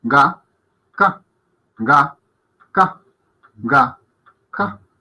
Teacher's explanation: Sienten cómo de dónde sale el sonido y cómo al decir ga suenan más las cuerdas vocales que cuando decimos ka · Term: una sonora y una sorda